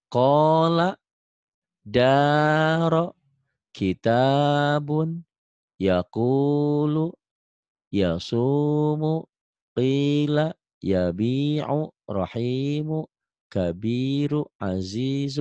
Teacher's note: Kasroh dengan ya mati, kasroh dengan ya mati, ini kasroh dengan ya mati. Matobi ini panjangnya 2 harokat atau 2 ketukan